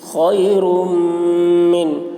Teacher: تنوین کے بعد حروف جر ملون میں سے میم آ رہا ہے، اس لیے را کو میم سے ملا کر غنہ کے ساتھ پڑھیں گے، اس کو ادغام ناقص کہتے ہیں۔